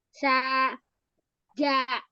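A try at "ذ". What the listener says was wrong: Enggak ja. Za. Sama. Keluarkan ujung lidah.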